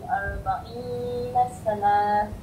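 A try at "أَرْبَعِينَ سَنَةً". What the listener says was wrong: Nah, pendek kan? Arba'ina sanah, jangan nasana. Tak nak panjangkan dia, pendekkan dia.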